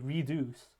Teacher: the second syllable is stressed so the first syllable is unstressed